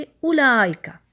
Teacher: لکھنے میں تو موجود ہے واو، لیکن ہم حرف مدہ نہیں اس کو بناتے، پتہ ہے نا ہمیں حرف مدہ کا، کہ حرف مدہ میں 2 کاؤنٹس کھینچنے ہوتے ہیں، لیکن یہاں پر ایسا نہیں ہے، ہم حرف مدہ نہیں بنائیں گے، ہم کہیں گے اولائکا، ایک حرکہ دے کے لام پر چلے جائیں گے اور واو حذف